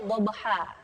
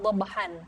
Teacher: Nah, karena diwaqaf kita bacanya dhabha, bukan dhabhan.